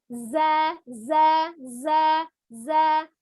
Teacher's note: Jadi tidak ada aliran nafas ke kerasanya gitu ya. Za itu kalau misalnya kita pasang telapak tangan itu tidak ada hembusan nafasnya gitu ya. Jadi dia bersih jelas gitu ya. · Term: al-jahru